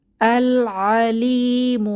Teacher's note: কমারি হরফ এসেছে তাই লামের উচ্চারণ হবে লাম সুকুন উচ্চারিত হবে